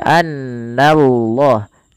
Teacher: na tipis Allahnya baru ditebalkan. Di sini kita namakan dengan lam tafkhim.